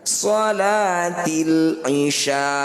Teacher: Ini jadi bacaan mad arid disukun. Cara bacanya sya, panjangkan 6 harokat, huruf terakhir sukunkan.